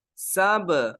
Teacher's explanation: سب bouncing letter کی طرح لوٹ کے آ رہی ہے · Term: قلقلہ